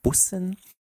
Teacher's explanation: is the regular s it's pronounced buen the second one is the double s which means we have a sharp s sound and a short vowel